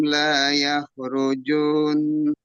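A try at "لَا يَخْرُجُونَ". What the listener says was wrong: Masih panjang lagi ju-nya. La yakhrujun. Ditasdikkan langsung ju-nya jangan dipanjangkan. La yakhrujun. Nah itu yang akan dilamakan karena nunnya gunah.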